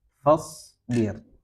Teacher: Sin sama shad ya. Shad pengucapannya tidak perlu monyong ya. Tidak perlu monyong, cukup huruf sin yang ditebalkan. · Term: huruf shad